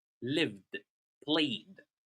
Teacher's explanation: In some other verbs like live and play, when we add ed, it's pronounced as d.